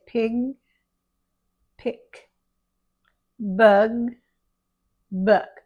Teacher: We don't want to say piga and picka. We want to leave off any uh